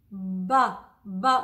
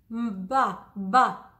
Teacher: Oh, the lips are coming together. My teeth are slightly apart. It's voiced.